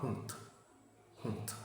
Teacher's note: Quand D est à la fin d'un mot, tu dis T.